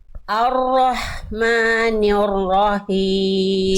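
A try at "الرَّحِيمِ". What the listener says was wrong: PR-nya di sini ya, di H kecil ya.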